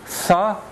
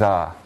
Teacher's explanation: They're both non-nasal. The first is voiceless, the second voiced.